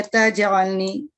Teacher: soft कलकला होगा क्योंकि जीम जो है वो हर्फ के दरमियान में है